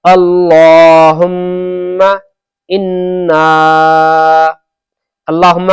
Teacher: अल्लाह हु्मा का मीम को जरा सा भी नहीं खींचे